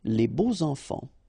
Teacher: you make the liaison between beau, so adjective and enfant. And here it's quite interesting because even if you've got this X, well, phonetically it will be like Z, so like if it would be an S, okay?